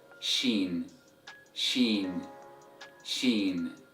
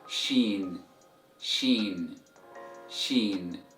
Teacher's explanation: So letter Sheen is a palatal sound, which means its sound comes from the heart palate located at the top roof of your mouth.